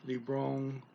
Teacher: the speaker contracts the words libro plus on to libron